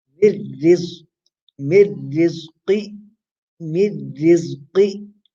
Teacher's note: You do idgham without gunna.